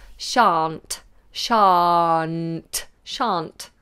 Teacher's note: We miss out the L's altogether.